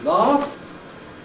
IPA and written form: lɑːf (laugh)